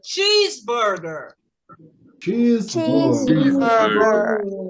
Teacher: E a palavra que vai ser mais forte vai ser a primeira, porque vai para cima.